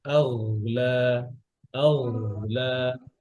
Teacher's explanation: গয়নের আওয়াজ চলবে, রখাওয়ার হরফ